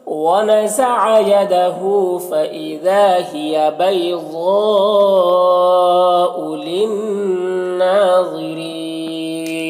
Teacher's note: ضاد حروف مستعلیہ میں سے پر پڑھیں گے اور یہ جو مد ہے مد متصل ہے